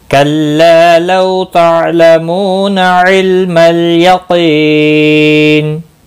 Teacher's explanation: मद्दुल आरिज़ वक़फ़ी होगा, 3 से 5 अलिफ के बराबर खींच कर वक़फ़ करेंगे।